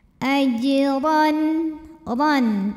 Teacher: Huruf ra dibunyikan secara tafkhim karena baris di atasnya adalah tanwin fathah, jadi barisnya di atas ya. Lalu bacanya adalah ditebalkan, pangkal lidah dinaikkan